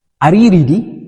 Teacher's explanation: ሪዲ ስንል ድምጻችን ከፍ ይላል ማለት ነው። ወደ ላይ ከፍ ይላል። are you ready ስንል ማለት ነው ድምጻችን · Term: voice goes up